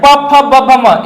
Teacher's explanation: ये दोनों आपके नीचे और ऊपर के जो लिप है वो आपस में स्पर्श कर रहे हैं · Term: ओष्ठ